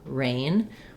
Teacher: It's vocalic, versus in a word like rain, I can't really hold that. I just start in the R position and I leave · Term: consonant R sound